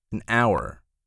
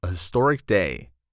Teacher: the H is silent, creating a vowel sound